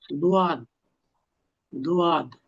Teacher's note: 7 নং মাখরাজ জিহ্বার গোড়ার কিনার সামনের উপরের এক পাশের দাঁতের গোড়ার সঙ্গে লাগিয়ে